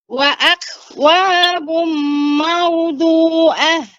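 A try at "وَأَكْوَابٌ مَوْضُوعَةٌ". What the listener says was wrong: Nah, ini juga perhatikan idgham. Idgham ini gunnahnya dipanjangkan. Wa'akwabum maudu'ah. Di sini wa'akwabum maudu'ah.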